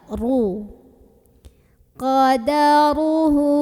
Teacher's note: Maka cara membaca huruf ra-nya ini ditebalkan. Jadi dengan cara mengangkat pangkal lidah kita, ru. Qadaruhu. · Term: tafkhim